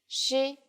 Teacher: it sounds like the SH in English, only with flatter lips